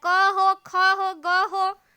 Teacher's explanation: तो कंठ से निकलता है। कवर्ग, पूरा कवर्ग कंठ से निकलता है